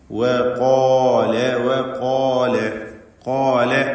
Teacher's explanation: അത് തെറ്റാണ്, സൂക്ഷിക്കണം. വഖാല വഖാല ഖാല എന്ന് പറയുമ്പോൾ ഖാഫിനും അതിന്റെ ദീർഘാക്ഷരമായ അലിഫിനും തഫ്ഖീം കൊടുക്കണം.